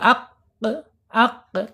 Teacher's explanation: Qop ini mempunyai sifat qalqalah. Harus terangkat ya harus mantul gitu ya. Qalqalah itu harus mantul.